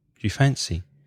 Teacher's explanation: do you becomes jew-jew it comes together